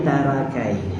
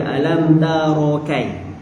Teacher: Tara dia nipis. Sedangkan ra ni ra baris atas kena baca tebal. Jadi tebal, jangan baca RA.